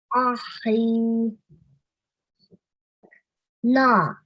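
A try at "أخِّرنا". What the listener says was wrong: Good. You got the letters. Well done. So and then you have to harden because of the shadda on top of the kha.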